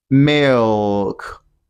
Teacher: You can hear the dark L in the word milk.